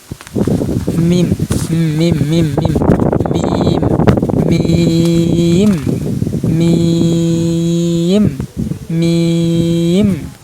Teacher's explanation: আর এইটা দেখেন মিম হরফ আর নুন হরফ, এই দুইটা কিন্তু নাকের মধ্যে লুকিয়ে মানে গুন্নার মতন করে হতে হবে, নাকের মধ্যে বাজতে হবে। মানে হরফ উচ্চারণের সময় নাকের মধ্যে বাজবে উচ্চারণের সময় · এই দেখেন মিম মিম মিম মিম মিম মিম মিম, যেভাবে মুখটা রাখা হয়েছে এইভাবে আপনি রাখবেন। মিম মানে শুকনা জায়গা থেকে উচ্চারণ করবেন দুই ঠোঁট মিশিয়ে। মিম মানে ঠোঁট ভিতর, মানে বিজা অংশ ভিতর যাবে গা।